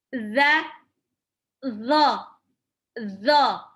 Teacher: sama-sama diujung lidah bertemu dengan dua gigi seri atas ya saat lidahnya seperti mau digigit